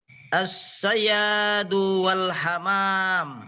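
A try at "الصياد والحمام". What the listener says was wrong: Ya, jadi shadnya disempurnakan. As-sayyadu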